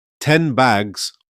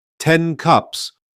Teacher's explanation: the final consonant of the first word seems to disappear or blend into the next one. This mostly occurs in natural spoken conversation. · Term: assimilation